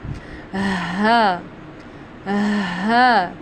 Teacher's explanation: जो हमारा हा है इसको हम अदा करते हैं हलक के नीचे वाले हिस्से से, ठीक है। यानी कि आप समझ लें कि आपने इसको लंग्स में जैसे हम एक बार गहरी सांस लेते हैं ना, तो उस तरह हमने इसको अदा करना है, हा, हा, ठीक है।